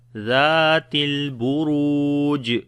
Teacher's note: Ra we read in heavy sound due to dhamma on it, and also we long there is waw madda. Buruj, and on the jim we make qalqala which is the strong qalqala, so we say zatil buruj.